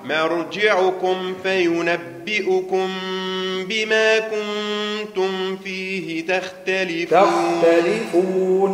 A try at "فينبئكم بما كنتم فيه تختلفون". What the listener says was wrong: فخم الخاء. تختلفون فينبئكم.